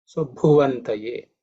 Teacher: Just to highlight the pronunciation aspect, the Bhu actually is the 4th letter in the Pa Varga, so it has to be aspirated.